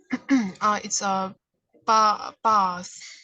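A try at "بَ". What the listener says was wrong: So no need to say bath, it's bath. So there is no long vowel. But for this one, in this case, it only has a fatha. So it doesn't have any long vowel.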